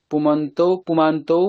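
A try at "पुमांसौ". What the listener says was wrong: না না না না না, এটা দন্তেশ কারান্ত না। পুমাম সৌ।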